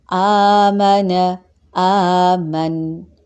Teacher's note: آپ نے دیکھا کہ ہم نے کھڑی زبر کو لازمی لمبا کیا جبکہ زبر کو صرف ظاہر کیا